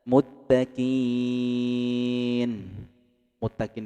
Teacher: disebut dengan mad arid lisukun karena mad bertemu dengan huruf yang disukun karena waqaf.